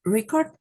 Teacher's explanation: record is a noun which has stress on the first syllable